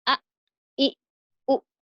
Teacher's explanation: Kalau huruf hamzah, dia suaranya langsung langsung terputus.